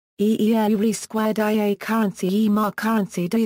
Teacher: The accent on the word is on the first syllable, not the second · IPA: [ˈʝe̞rβ̞ä ˈmäte̞]